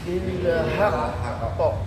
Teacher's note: Qnya ingat ada tasdid tahan dulu baru dibunyikan, diqalqalahkan.